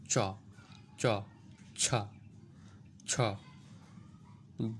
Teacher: জিভ প্রসারিত হয়ে তার সমমানের অংশ দিয়ে শক্ত তালু স্পর্শ করে বায়ুপথে বাধা সৃষ্টি করে, সেগুলো হলো তালব্য বর্ণ।